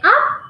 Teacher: So when I'm saying up, my voice goes higher pitched. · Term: intonation